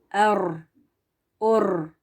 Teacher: रॉ को pronounce करते हुए एक ही बार तकरार एक ही वाइब्रेशन की साउंड आनी चाहिए